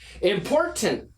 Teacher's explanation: We can keep the first T and stop the second T.